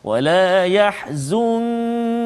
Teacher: nun mati bertemu dengan kaf, maka ikhfa hakiki sebagaimana yang kita telah belajar sebelum ini, misalnya kita kena baca dengan dengung, bacaan kita dengung dengan kadar 2 harakat.